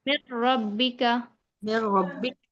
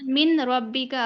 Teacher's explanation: यहां पर जो नून साकिन की जो आवाज है वो बिल्कुल ही खत्म हो जाएगी डायरेक्ट हम क्या करेंगे मीम को रा से मिला देंगे मिला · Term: इगाम